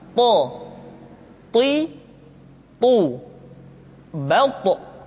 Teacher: ketika to diucapkan, suara kita terdengar menebal · To diucapkan dengan menyentuhkan ujung lidah dengan gusi-gusi dua gigi seri bagian atas. Sifat yang dimiliki oleh huruf to yang mesti nampak ketika kita ucapkan adalah sifat al-isti'la dan sifat al-itbaq.